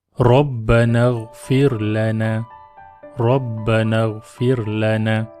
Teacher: Di sini kita baca tebal Rabbana kerana baris atas.